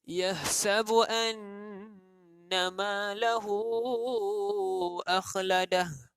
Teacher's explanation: syaddah atau huruf yang kita gandakan. Kita tekankan bunyi anna wajibul ghunnah.